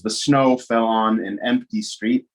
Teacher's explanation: and fell was sort of unstressed, because even though it's important that snow is falling, the way my brain was trying to convey or pull meaning out of that statement, it was more about the snow and the empty street.